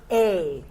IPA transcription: eɪ